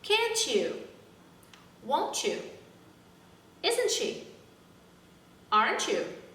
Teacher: questions are supposed to go down can't you won't you isn't she aren't you not up aren't